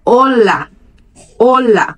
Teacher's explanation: em espanhol, a ênfase é no o do olá